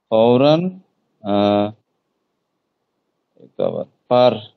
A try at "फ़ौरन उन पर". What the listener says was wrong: ফৌরান কি? পরের আগে কি? ফৌরানের পর কি? উন পর। হ্যাঁ, ফৌরান উন পর।